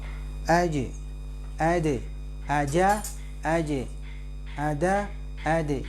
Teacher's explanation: saat sukun dimukol-kolakan bunyinya pantulan itu hampir sama kekuatannya dengan vokal